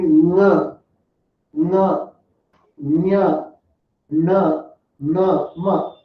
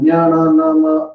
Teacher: ಮೂಗಿನ ಮೂಲಕವೂ ಅಂತ ಹೇಳ್ತೀವಿ ಅಂದಾಗಿ ಅದನ್ನ ಅನುನಾಸಿಕ. ನಾಸಿಕ ಅಂದ್ರೆ ಮೂಗು, ಮುಖ ಸಹಿತವಾಗಿ ಅಂದ್ರೆ ಬಾಯಿ ಸಹಿತವಾಗಿ ಮೂಗು ಸೇರಿಸಿ ನಾವು ಉಚ್ಚಾರಣೆ ಮಾಡ್ತೀವಿ